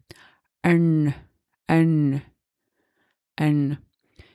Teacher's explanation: instead of pronouncing the N with the tip of your tongue right before your upper teeth, you will put it a little bit farther back, and it will become a little bit more, how can I say, thicker.